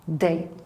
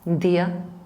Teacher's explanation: If you pronounce it, you would notice the tip of your tongue going against your alveolar ridge. Day. If you pronounce it in Spanish, dia, it goes against the teeth. So it's quite a small difference, but very salient perceptually.